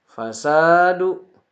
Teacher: huruf sin ya, berharokat fathah, ada alif, ini mad tabi'i namanya. 2 harokat saja.